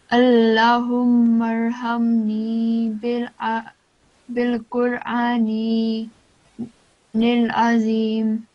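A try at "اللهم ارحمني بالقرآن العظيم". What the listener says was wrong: There was still a mistake with lam here. You didn't prolong it for longer. bil Qur'anil Azim.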